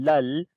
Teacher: لام کو لام کے ساتھ ملائیں گے, لل.